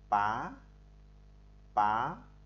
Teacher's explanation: Thanh thứ hai đọc đi từ dưới lên trên, pá pá, đọc như dấu sắp tiếng Việt là thanh cao, từ thấp lên cao